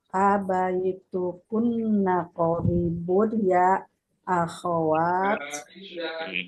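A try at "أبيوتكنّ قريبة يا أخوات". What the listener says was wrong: Abaitukunna qaribun ya akhwat. Ahsan.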